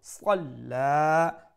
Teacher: وتشانو خرمو এক আলিফ লম্বা করবো صلى صاد full mouth letter you make sure you pronounce it with a fuller sound so that it does not sound like the letter seen